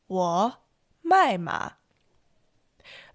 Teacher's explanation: My with a fourth tone is the verb to sell.